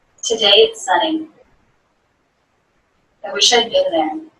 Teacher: the pitch goes down throughout the sentence. We have two longer sentences, and though there is some up and down throughout the sentences, for both sentences the lowest point is at the end.